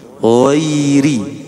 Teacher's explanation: Terus juga jangan dibaca goiri, bukan goiri, ya. Kalau goin ini lebih lunak suaranya, sehingga semacam ada getaran